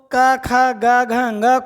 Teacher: क ख ग घ ङ को कंठ से उच्चारित करते हैं